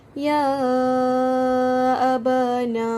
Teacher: dibaca dengan kadar 4 atau ke 5 harakat sahaja.